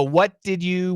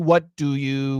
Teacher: The first one is going to usually have a J pronunciation, and the second one will not.